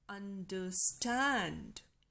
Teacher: two unstressed syllables followed by a stressed syllable as an understand now stand is a syllable which is seeking · un de these two syllables are short and unstressed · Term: anapest